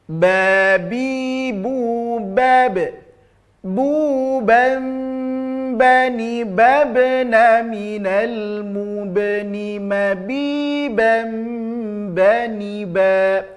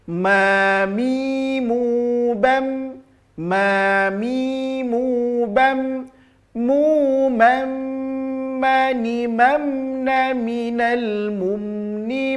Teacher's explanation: Kalau ba tadi dengan sedikit ada penekanan pada kedua bibir, sedangkan huruf mim tempelkan saja tanpa ada penekanan.